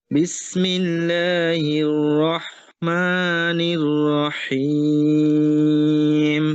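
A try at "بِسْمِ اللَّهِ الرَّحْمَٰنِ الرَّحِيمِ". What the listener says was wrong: বিসমিল্লাহি, হাঁটা ক্লিয়ার করেন। বিসমিল্লাহির, হাঁটাও ক্লিয়ার, হ্যাঁ, বিসমিল্লাহির।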